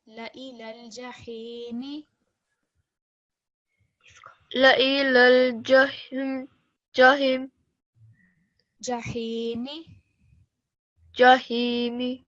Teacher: La ilal jahim. Prolong it a little bit more because it's ya madda. La ilal jahimi.